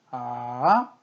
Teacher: 레에서 시작했는데 도까지 내려갔다가 바로 파까지 올라가는 소리. 내려갔다 올라가는 소리. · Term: 삼성